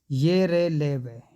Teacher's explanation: वे ध्वनियाँ जिनका उच्चारण करते समय मुखांग आंशिक स्पर्श करते हैं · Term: अंतस्थ व्यंजन